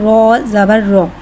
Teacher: रॉ पे ज़बर है, ज़बर को मुँह खोल के अदा करके पढ़ेंगे। और रॉ पे ज़बर है लिहाजा यहाँ रॉ को मोटा अदा करके पढ़ेंगे